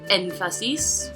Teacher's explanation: The prosodic accent falls on the first, which is technically the third to the last.